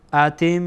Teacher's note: میم تشدید داره، بنابراین اینجا باز هم میم غنه میشه